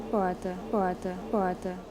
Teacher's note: Só que assim, o que a gente tem aqui na região de Campinas não pode ser considerado retroflexo, é um aproximante retroflexo, porque a língua ela não dobra